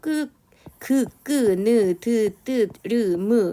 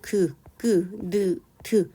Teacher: 느, 드 할 때 결국은 우리는 느, 드 하면서 으라고 하는 모음의 도움을 받았어요